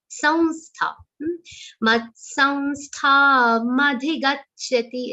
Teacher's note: So, dot on sa will be pronounced like a nasal va sound here. Anunasik va.